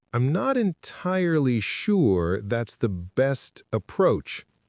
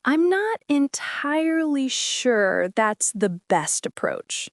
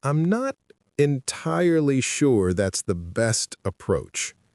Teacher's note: The stress is on sure and best.